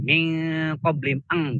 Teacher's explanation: Selain bacaan izhar, idgham dan iklab, itu dibaca ikhfa yang pada umumnya bunyinya tuh eng.